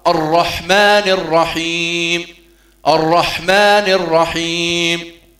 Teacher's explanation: الرحمن الرحيم دون مد الراء في الرحيم، كثير من أبنائنا ربما يقرؤون ويقولوا الرحيم، يعني مدوا حرف الراء.